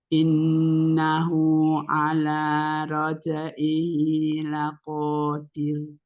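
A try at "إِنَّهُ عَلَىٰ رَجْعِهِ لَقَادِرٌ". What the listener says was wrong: Iya, qafnya mau lebih bulat lagi. Laqadir.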